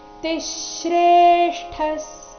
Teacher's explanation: यद्यदाचरति श्रेष्ठस् यद्य ಯ ಮೇಲೆ ಆಘಾತ ಮುಂದೆ ದಿಯ ಇದ್ದ ಕಾರಣ ಯದ್ಯದಾಚರತಿ ಶ್ರೇಷ್ಠಸ್ ತಿಶ್ರೇಷ್ಠಸ್ ತಿ ಮೇಲೆ ಆಘಾತ ಗಮನಿಸಿ ತಿಶ್ರೇಷ್ಠಸ್ ವಿಸರ್ಗದ ಉಚ್ಚಾರಣೆ ಇಲ್ಲಿ ಅರ್ಧ ಸ ಆಗಿದೆ.